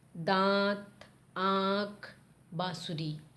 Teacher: अनुनासिक में नाक और मुंह दोनों का प्रयोग करते हैं हम। इसमें आपकी ध्वनि दोनों से निकलती है